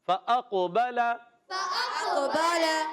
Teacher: قاف موٹا بھی پڑھنا ہے، مگر قاف سکون والا ہے، جزم والا ہے، قلقلہ ہوگا، آواز لوٹ کر آئے گی